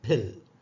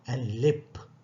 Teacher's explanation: And lip. Here pa is not aspirated because it is coming finally